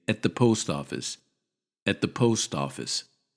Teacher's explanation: We don't say bed or lest when we say them quickly. Listen to these actors reduce at to et